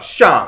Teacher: the fourth tone is downwards